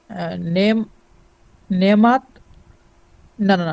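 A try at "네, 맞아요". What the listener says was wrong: sorry sorry একটা কমা আছে তার মানে হচ্ছে আপনি এখানে দম নেবেন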